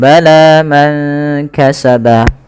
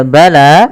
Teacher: panjangkan huruf lanya sepanjang dua harakat. Karena la di sini ada alif kecil yang datang setelahnya dan ia berada di atas huruf ya. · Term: mad thbi'i